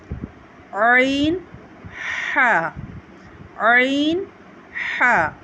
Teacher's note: حلق کے درمیان والے حصے سے اس کو ہم ادا کرتے ہیں۔